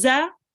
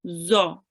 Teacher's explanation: The tongue is pressed against the edge of the upper teeth. Slight air should escape, and it is a thick and heavy sounding letter compared to the za here.